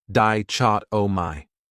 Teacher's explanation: That 3rd syllable has that schwa